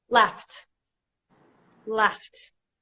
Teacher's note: gh but the sound is a F sound and and again I don't feel it no vibration so that's a voiceless sound so it takes the T sound